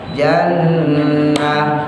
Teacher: Qila dukhulil jannah, ya, nunnya tahan, tanya tak marbutoh, diwakofin jadi ha.